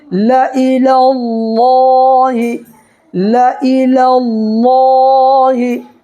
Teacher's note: تو دیکھیے اللہ کے لام سے پہلے یہ لام کے اوپر زبر ہے نا، تو اللہ کے لام کو پر پڑھنا ہے